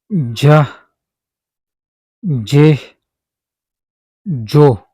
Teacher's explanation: Dear learners, when the middle front of the tongue touches the area between the alvear ridge and the hard pallet and block the air and then release it with a slight explosion and friction making j. >> This sound is called africate because it is produced with friction and explosion similar to the English letter sound judge.